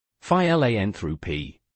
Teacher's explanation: Phi-lan through p, with the stress on the second syllable. Exactly, the stress falls clearly on lan.